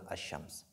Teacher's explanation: le fait d'introduire la lettre Lam dans la lettre suivante, qu'on appelle Al-Idgham